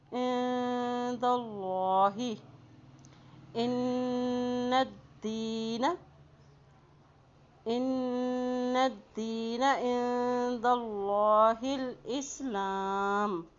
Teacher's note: اللہ کے نام سے پہلے زبر آ گیا ہے تو اللہ کا نام یہاں پر موٹا ادا کیا جائے گا